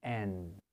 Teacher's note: the difference between the N sound and the M sound mainly is we don't close our mouths when we pronounce the N